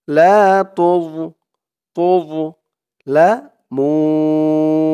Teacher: তুম তা দিয়ে মিম ধরবে তুম তুম لا تظلمون لا أكلفتن وأنتم لا تظ তা দিয়ে জ ধরবে তোজ উচ্চারণটা খেয়াল করবেন। জর উচ্চারণটা করার সময় মুখটা একটু ভরপুর হয়ে যাবে এমন মনে হবে।